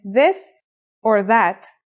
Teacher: it's pronounced with the tongue between the upper and the lower teeth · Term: voiced sound